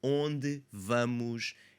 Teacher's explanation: onde ends with that unstressed e, bleeds into the v. vamos, it's not going to have too much of a an issue there. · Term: liaison